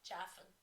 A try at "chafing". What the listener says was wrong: Is it not chafing? Chaffing, like horse chaff.